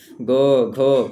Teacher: ग घ कंपन हो रहा है ना, ये आपके कौन से हैं, सघोष हैं